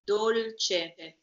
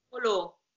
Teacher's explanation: the L before the C sounds double, while the other one doesn't